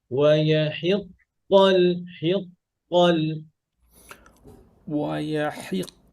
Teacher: ويحق যখন ধরবেন তখনই কফ মোটা।